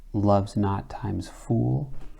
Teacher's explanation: And so in this case, love's not is strong, weak, but here we have what we would call a spondy, but it's not because the iambic pentameter takes over. This times is demoted while fool maintains its full stress. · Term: trochaic inversion